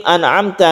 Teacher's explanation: nun bertemu dengan ain, izhar halqi karena ain itu termasuk huruf halqi atau huruf tenggorokan